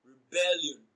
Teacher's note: Rebellion is stressed on its second syllable